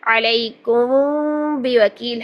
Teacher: دونوں ہونٹوں کو نرمی کے ساتھ ملائیں اور پھر با کو سختی سے ادا کر دیں